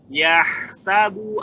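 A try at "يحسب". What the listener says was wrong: Ya, nggak boleh dipanjangkan Pak. Jadi dua ya-nya. Langsung. Yahsabu.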